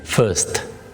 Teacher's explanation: huruf R dalam bahasa Inggris dibacanya sangat lembut, huruf R itu, sehingga dibacanya menjadi first